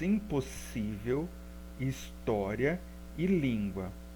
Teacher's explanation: Impossível é o si, história é o tó, em língua é o lim. Então, essas sílabas pronunciadas com maior intensidade ou força, elas recebem o acento. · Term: sílaba acentuada